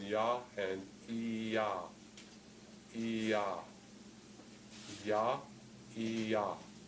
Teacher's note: The y is very close to the vowel e, or the vowel that we write as I